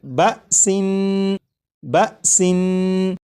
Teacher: نون کی ادائیگی کرتے وقت آپ نے غور کیا ہوگا کہ زبان تالو سے لگی